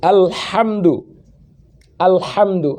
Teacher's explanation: Ha dari tengah kerongkongan.